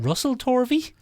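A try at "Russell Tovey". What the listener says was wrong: It's not. no or. There's no or. No, it's Tovey.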